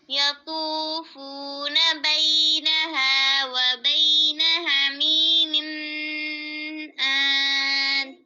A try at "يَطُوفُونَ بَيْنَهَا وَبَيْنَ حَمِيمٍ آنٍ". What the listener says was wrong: गलत मिन नून तनवीन के बाद कौन सा हरफ है हमीमिन हाँ हमजा है ना तो नून तनवीर पर गुन्ना नहीं होगा फिर आयत पढ़ें दोबारा यतूफूना से